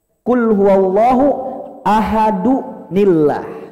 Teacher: ketika dua huruf mati bertemu, maka yang pertama dikasrohkan